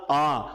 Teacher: विवृत स्वर जो होता है ना उसमें हमारा मुख सबसे ज्यादा खुलता है जैसे मैंने बोला आ तो आ में सबसे ज्यादा मुख खुलेगा